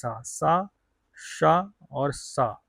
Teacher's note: ये तीनों ही प्रकार के जो स होते हैं वो होते हैं अघोष